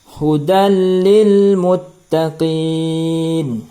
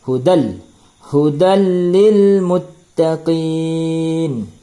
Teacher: tapi idghamnya adalah bila gunnah, tidak ada dengung. Tekan saja, tidak berdengung. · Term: idgham bila gunnah